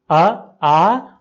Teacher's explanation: तो अ, आ कंठ से बोले जाते हैं, इसलिए सवर्ण है